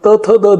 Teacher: दाताला जिभेचं टोक लावून त्याचा उच्चार होत असतो किंवा फुफ्फुसातून बाहेर पडणारी हवा या ठिकाणी जिभेच्या माध्यमातून दातापाशी अडवली जाते आणि तिचा स्फोट करून या ठिकाणी त थ द ध हे निर्माण होतात.